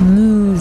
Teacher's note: The lips protrude out in the back vowel. Movies. And the cheeks pull back in the front vowel.